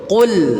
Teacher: Kemudian lam, perhatikan, qul, lam ditipiskan. Jangan dibaca seperti tebel.